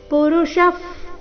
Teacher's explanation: ಎರಡು ಶಬ್ದಗಳ ಕೊನೆಗೆ ವಿಸರ್ಗ ಉಚ್ಚಾರಣೆ ಫರೀತಿ